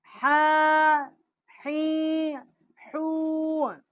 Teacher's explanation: چھوٹی ہا ہے، وسط حلق سے اس کا مخرج ہے